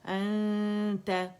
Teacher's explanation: ہم نے یہاں اظہار نہیں کرنا، انت انت، اور اقواہ درجے کا یہاں پہ مرتبے کا ہوگا، یعنی بڑی مضبوطی سے زبان کو آپ نے تا کے مخرج کے پہلے قریب لے کے جانا ہے، نون کو چھپاتے ہوئے، غنہ ریٹین کرتے ہوئے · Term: اخفا